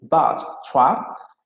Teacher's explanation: but y trap se van a pronunciar con la vocal media abierta anterior no labializada